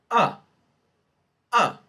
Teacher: This is a short vowel. It is a low mid vowel. It is low, right? · So it is a low mid vowel. It is central in terms of frontness or backness, and my lips are neutral.